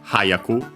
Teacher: The accent then moves on the third to last mora, so hayaku on the ha instead of the ya in its dictionary terminal form.